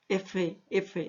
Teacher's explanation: F choca el aire sobre nuestros dientes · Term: fricativas o continuas